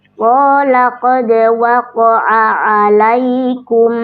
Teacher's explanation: Qala qad waqa'a, huruf dal dal sukun dibaca memantul, namanya qalqalah. Karena posisinya di tengah kalimat maka dia qalqalah sughra, pantulannya ringan.